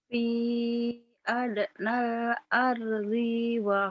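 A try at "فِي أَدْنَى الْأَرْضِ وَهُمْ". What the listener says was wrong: Pendek. Ardi wahum. Ardi wahum. Jangan ardi wahum. Jangan. Fi adnal ardi wahum. Jangan dipanjangin nih, Kak.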